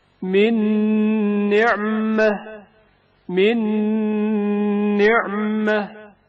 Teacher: نون میں نون ساکن کا ادغام جو غنہ کے ہمراہ ہے